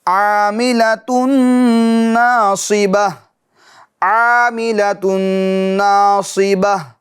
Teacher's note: نون آ رہا ہے, کیونکہ حروف غیر ملون میں نون بھی ہے, تو لہٰذا تا کی تنوین کا نون ساکن میں کیا ہوگا؟ ادغام ہوگا, اور وہ بھی گنہ کے ساتھ